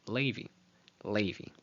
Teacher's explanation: the Ashkenazi pronunciation, I'm sure you've heard that TZERE as LEI-vi